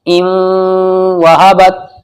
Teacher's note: नाक में ले जानी है आवाज। क्यों जाएगी, क्योंकि नून साकिन के बाद वाव आ रहा है हुर्फ यरमलून में से। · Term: इदगाम यरमलून